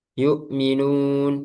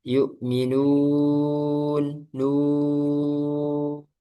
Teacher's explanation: Nah, itu ke bawa masuk hidung. Harusnya ee enggak masuk hidung karena sudah berganti makhraj yaitu aljauf. Bukan, bukan rongga hidung lagi.